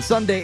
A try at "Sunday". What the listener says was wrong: No, it sounded like you said someday. Like, we'll send you to on a random day. Yeah, no, it's on Sunday.